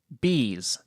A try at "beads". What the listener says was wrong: Beads. With a D. Beads. Beads. Beads. Beads.